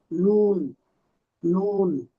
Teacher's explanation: 9 নং মাখরাজ জিহ্বার আগা তার বরাবর উপরের তালুর সঙ্গে লাগিয়ে